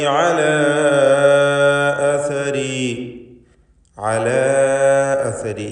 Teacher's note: ഇവിടെ മദ് മുൻഫസിൽ ജായിസാണ് അലിഫിൽ നൽകപ്പെടുന്നത്. 4-5 ഹറക്കത്തിൻ്റെ അളവിൽ അലിഫിനെ ദീർഘിപ്പിക്കണം.